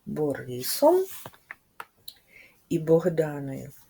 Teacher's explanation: коли ми вимовляємо звук Б наші губи зімкнені язик Вільно лежить у роті повітря з голосом не може вільно вийти через губи і проривається між них і виходить звук Б